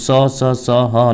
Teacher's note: जो स ह निकलता है, ये आपके संघर्षी होते हैं, क्योंकि संघर्ष करना पड़ता है इसमें, ठीक है। जब भी स और ह बोलेंगे तो इसलिए इनका नाम क्या पड़ गया, संघर्षी।